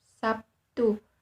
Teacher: karena pengaruh bunyi t yang tak bersuara berubah menjadi Bunyi p yang juga tidak bersuara · pada kata Sabtu dalam bahasa Indonesia lazim diucapkan Sabtu dimana terlihat bunyi B berubah menjadi P sebagai akibat pengaruh bunyi teh yang dikenal dengan istilah asimilasi Hai bunyi b adalah bunyi hambat bersuara sedangkan bunyi teh merupakan